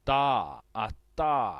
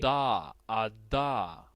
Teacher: lo de bu bu gesticulando correctamente es a luego tenemos una una t que se encuentra en el plano de El alvéolo hemos dicho que es esa zona que está donde nuestros dientes